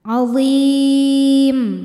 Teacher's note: Mad tabi'inya ya sukun didahului harokat kasrah, kemudian huruf yang disukunkannya mim. Maka dha-nya panjang, boleh 2 atau 4 atau 6 harokat, asal konsisten dalam sekali baca. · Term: mad arid li sukun